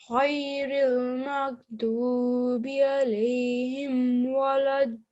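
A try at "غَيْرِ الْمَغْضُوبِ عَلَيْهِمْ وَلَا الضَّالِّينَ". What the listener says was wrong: You need to work on your thick and heavy sounds, okay? Make sure that the sad, the ta, okay, the ghain, that you make sure that they're thick and heavy sounds, and that the ayn,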